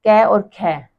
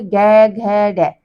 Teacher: कै ख में कंपन महसूस नहीं होती है। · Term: अघोष